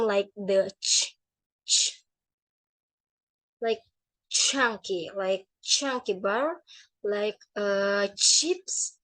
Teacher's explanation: And the last one is affricates. This combines stop and fricative in one sound